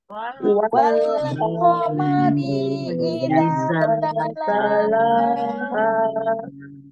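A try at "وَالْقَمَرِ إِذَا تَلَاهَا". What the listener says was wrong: Jangan dipanjangkan ketika dia pemisahan kata. Jangan wal-qamari. R-nya tuh pendek. Wal-qamari idza. Qamari idza. Pokoknya itu nggak di ko. Tinggal dibuka aja ya.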